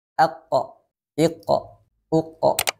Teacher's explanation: Qalqalah atau memantul ketika disukunkan